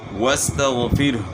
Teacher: غین کی آواز گلے کے شروع سے نکلے گی